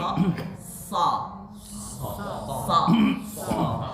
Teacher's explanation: Nah, tidak keluar dari salah satu gigi kanan dan kiri ya, harus barengan keluarnya. Seperti kelihatannya membaca huruf sa, tapi agak terkeluar anginnya itu full dari geraham kanan dan geraham kiri. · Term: huruf so